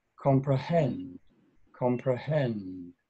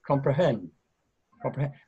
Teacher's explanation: And even a little bit higher. So it's comprehend, hen, goes up a bit.